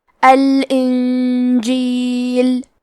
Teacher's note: کلمت الانجیل میں نون ساکن ہے، پھر حرف الجیم ہے۔ جیم حروف الاخفاء میں سے ہے تو ہم یہ حکم کو غنہ کے ساتھ ادا کریں گے